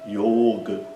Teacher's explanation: É yoga e o o é longo. Yoga, né? O a é curto.